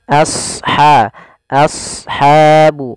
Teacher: Dalam kata asha, tebalkan huruf shad, biarkan huruf 'a' tetap tipis.